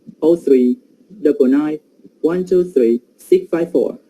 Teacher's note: when I say the telephone number, I say it in a group of numbers, yes, and there are some pauses between them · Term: tone units